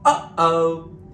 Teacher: the sound is coming out of our throat not from our teeth the stop between the up and O is the key so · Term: glottal stop